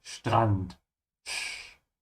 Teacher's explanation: remember the S and T, when they come together like that, it becomes a sh